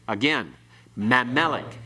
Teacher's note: You don't have any accent on ma because the accent comes on meh. It's pronounced all together quickly.